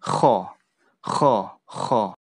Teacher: huruf hole-hole ya Khan ini salah satu yang keluar melalui tenggorokan diucapkan keluar dari tenggorokan kemudian sifatnya ada Hames ada udara keluar tapi udara itu terdengar kayak kasar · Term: hamas